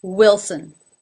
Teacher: the unaccented syllable, sin, again, almost without a vowel.